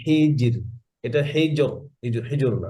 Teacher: নিয়ম কি নিয়ম হচ্ছে কাসরা জেরের পরে সুকুন তারপর র সুকুন জেরের পরে সুকুন তারপরে র সুকুন তাহলে র কি হবে পাতলা হবে